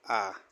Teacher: जीभ के पिछले हिस्से से निकल रहा है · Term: पश्च स्वर